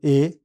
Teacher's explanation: इस स्वर के उच्चारण में जीभ मुंह के आगे और मध्य ऊंचाई पर रहती है। होंठ फैले रहते हैं और मुंह थोड़ा खुला रहता है। ये स्वर बिना किसी अवरोध के उत्पन्न होता है।